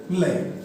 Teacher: जब इसका उच्चारण करेंगे तो हवा जो निकलेगी वो जीभ के बगल से सहारे से निकलेगी। लय ऐसे बाहर से ऐसे घूम कर के आएगी, है ना। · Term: पार्श्विक व्यंजन